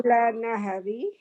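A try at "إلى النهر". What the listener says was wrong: Very good. Ila Nahri.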